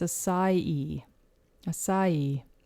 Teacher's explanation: So some people will say acai, acai, or just acai. But you actually stress the last syllable of E. So it's acai.